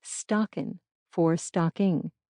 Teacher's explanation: Word final ing was often reduced to in as well, for instance, stockin for stocking